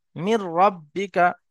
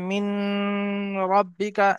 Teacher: নুন সাকিনকে বিনা গুণনায় মিলিয়ে পড়তে হবে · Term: ইদগামে তাম